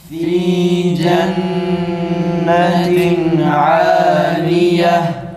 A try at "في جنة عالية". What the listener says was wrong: Fa'nın sesi de biraz tam doğru çıkmıyor. Biraz ı'ya yakın ses tonuyla çıkıyor.